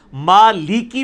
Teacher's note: قرآن میں جب لام زیر لی آئے گا نا تو لام زیر لی پڑھنا ہوگا، لام زیر لے نہیں پڑھنا ہوگا، ما لیکی پڑھنا ہوگا، ما لے کے نہیں پڑھنا ہوگا۔